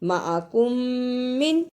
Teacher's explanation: میم ساکن کو تھوڑی دیر منہ میں رکھنا ہے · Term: ادغام شفوی